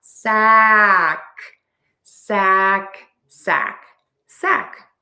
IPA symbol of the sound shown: sæk